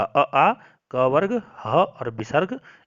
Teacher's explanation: अ आ क वर्ग ह और विसर्ग इन सब का उच्चारण स्थान क्या होगा, कंठ होगा